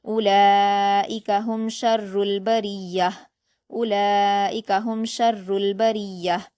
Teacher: ہم شر البریہ، با پر حرکت جلد پڑھیں گے اور را پر زیر کی حرکت ہے اس لیے اس کو باریک پڑھیں گے۔ آگے یا پر تشدید ہے تو را کو یا سے ملا کر سختی سے پڑھیں گے، یا پر حرکت جلد پڑھیں گے، اور آگے گولتا ہے تو اس کو ہا ساکن میں بدل کر وقف کر دیں گے۔